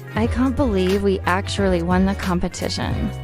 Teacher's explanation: Listen to the higher pitch and faster pace.